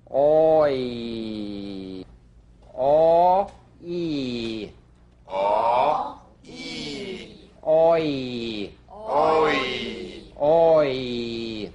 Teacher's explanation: This is a combination of the number three structural vowel with the Y buzz.